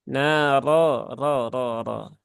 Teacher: Roknya ditebalkan lagi, Bu.